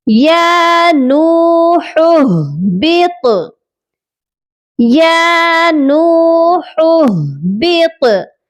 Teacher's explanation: یہاں پر ایک ہا کے اوپر پیش ہے اور دوسرا ہا ساکن ہے، دونوں ہی حلق سے ادا ہوتے ہیں۔ ہا کو درمیان والے حلق سے ادا کریں گے جس کے اوپر پیش ہے، اور ساکن والا ہا سینے والے حلق سے ادا کیا جائے گا